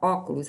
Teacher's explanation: como a sílaba tônica é a antepenúltima ela é uma palavra proparoxítona